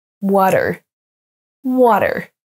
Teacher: on ne prononce pas le a comme un A français avec la bouche bien ouverte mais water vous pouvez aussi le prononcer à la Britannique avec